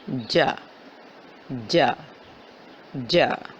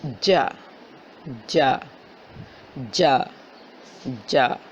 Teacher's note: زبان کا درمیان اور اس کے مقابل تالو کے ملاپ سے ادا ہوتا ہے، یعنی کہ زبان کا درمیانی حصہ اس کے سامنے جو تالو کا حصہ ہے اس کے آپس میں ملنے سے جیم کی ادائیگی ہوتی ہے۔